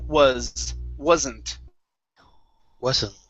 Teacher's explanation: this is going to be a voiced s sound